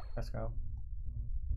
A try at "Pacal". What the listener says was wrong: It's not Pascal because it doesn't have an S. P-A-C-A-L.